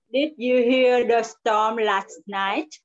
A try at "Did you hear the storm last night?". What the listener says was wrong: Nào, chị đọc là đứt rồi nha. Did. Yes. Tăng cái hàm giọng xuống. Did.